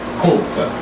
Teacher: the K originates on the back of the tongue, and that thirds, the vowel is going to go back as well, such as what I was explaining with the back R.